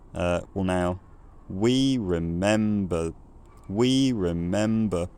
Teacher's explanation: you have these two rhythmic stresses on we and mem, and those are both at a high pitch